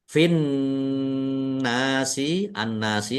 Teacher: Nun tasdid dibaca mendengung ditekan ditahan biar tampak mendengung